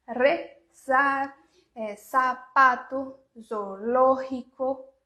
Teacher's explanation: várias palavras com o Z que tem esse som do S bem mais sutil, sem esse tremido, tá? Sem esse Z que a gente não tem no espanhol.